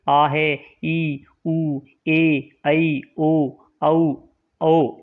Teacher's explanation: जिन स्वरों के उच्चारण में 2 मात्राओं का समय लगता है उन्हें दीर्घ स्वर कहते हैं।